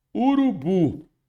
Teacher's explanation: urubu sílaba tônica é a última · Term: oxítona